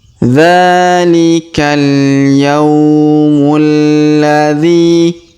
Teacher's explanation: Perhatikan huruf ya kita ayun sekali karena terdapat waw sukun di depannya. Yaumul, huruf mu langsung sambung ke huruf alif lam qamariyah yang berharokat tasdid